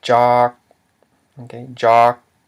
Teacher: the mid-consonant j plus a long vowel ah and a dead syllable k, which equals a low tone